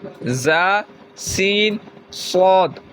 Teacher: ان 3 حروف زا، سین، صاد کو ادا کرتے وقت سیٹی کی طرح تیز آواز نکلتی ہے، اس لیے ان حروف کو حروف صفیریہ یعنی سیٹی والے حروف کہتے ہیں۔